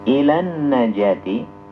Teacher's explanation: Ila yang tadinya dibaca mad tabi'i, berhubung dibaca wasal atau dibaca sambung, maka dia tidak jadi panjang, tidak jadi mad.